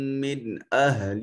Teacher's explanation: نون ساکن کے بعد حمزہ حرف اظہار ہے، تو نون کو ظاہر کر کے پڑھیں گے